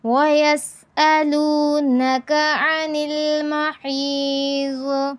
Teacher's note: محیض کا جو ضاد ہے یہاں پر کیا ہے؟ تفخیم ہے، یعنی ہم نے ضاد کو پر پڑھنا ہے۔